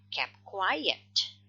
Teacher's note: This is the consonant cluster. And then we tend to forget the t. Okay. We say just kept quiet.